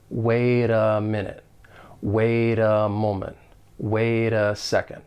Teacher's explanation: the final T in wait, I am going to pronounce it as a flap T. Once again, it's going to sound like a soft D, which is very common in places like the United States. · we can link that flap T with the vowel sound in that article, a. Wait a minute. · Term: linking